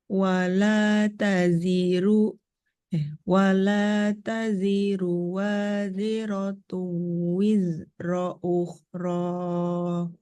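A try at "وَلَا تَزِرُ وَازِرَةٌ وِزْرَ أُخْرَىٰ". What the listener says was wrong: Nah, yang zai kedua dan zai ketiga kurang kuat. Wala taziru waziratun wizra.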